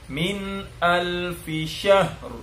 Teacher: Ha dulu mati, baru pindah ke ro, ro-nya tebal.